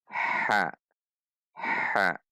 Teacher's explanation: ha dari tengah tenggorokan dengan suara yang tipis tertahan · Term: huruf ha